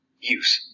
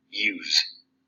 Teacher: The noun takes a voiceless alveolar fricative